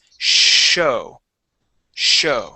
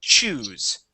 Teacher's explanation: the first word is show the airflow is continuous